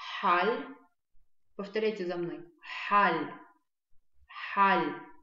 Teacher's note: А Х, звук, который нам нужен на абазинском, он близкий, только он он более долгий, и голосовые связки, они чуть уже. Выдыхаемый воздух проходит с большим трением.